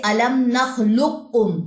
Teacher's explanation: یہ قاف موٹے کا باریک میں ادغام ہو جائے گا، ادغام متقاربین، کیونکہ قاف اور کاف کا مخرج قریب المخرج ہے۔